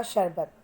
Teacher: जब शरबत बोल रहे हो तो आप तालु के हेल्प से बोल रहे हो, इसलिए इसको तालव्य श बोलते हैं